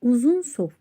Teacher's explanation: Uzun sof sözündə u və o saitləri var. Qalın saitdir və dodaqlanan saitdir.